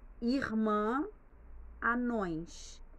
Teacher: a gente acaba soltando o ar né pelas narinas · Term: vogal nasal